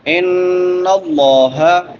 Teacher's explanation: ان اللہ، نون مشدد ہے، غنہ ہوگا، لفظ اللہ پر پڑا جائے گا کیونکہ لفظ اللہ سے پہلے زبر ہے